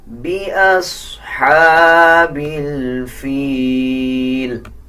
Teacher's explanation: صاد کے اوپر جزم ہے، صاد کو پچھلے الفاظ کے ساتھ ملا کے پڑھا جائے گا اور صاد موٹے حروف میں سے آتا ہے۔ اکثر لوگ صاد کو پر یعنی موٹا نہیں پڑھتے، اس کو پر پڑھنا چاہیے · ہا کے اوپر کھڑا زبر ہے، 1 سیکنڈ لمبا کر کے پڑھیں گے، اور ہا کی آواز یعنی باریک ہا ہے، اس کو نرم پڑھا جائے گا۔ بِأَصْحَابِ الْفِيلِ، یا کے اوپر جزم ہے، اس سے پہلے دیکھیں زیر آ رہا ہے فا کے نیچے۔